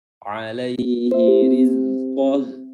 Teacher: ra-nya di sini berharokat kasrah, jadi dia bacaannya tarqiq atau tipis.